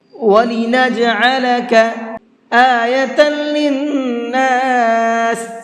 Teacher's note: نون کے اندر غنہ کریں گے، تھوڑی دیر آواز کو ناک میں روک کر کے پڑھیں گے